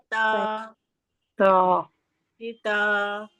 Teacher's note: بار بار یہ چیز کہہ رہی ہوں نا, تا بالکل سیدھا نکلتا ہے, باریک نکلتا ہے. زبان کی نوک کو ہم نے سامنے کے اوپر کی 2 دانتوں کی جڑ سے لگایا اور ہمارا نکلا تا